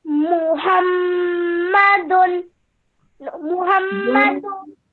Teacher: Just try and take a deep breath before you say it and hold the meme sound for 2 seconds and then the tanween gunna sound for 2 seconds as well